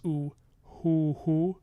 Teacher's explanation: you're anticipating the vowel when you're making the h and so you're getting a really like a voiceless hoo-hoo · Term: labial, voiceless oo